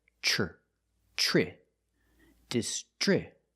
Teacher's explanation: The TR makes the ch sound like chicken, plus the the R sound together, tri.